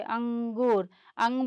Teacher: अंग बोलेंगे ना तो ग का थोड़ा नाक से आएगा, इसीलिए इसको अनुस्वार कहा जाता है